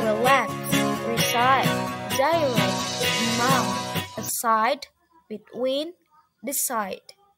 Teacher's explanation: In most syllable verb and preposition, the stress is on the second syllable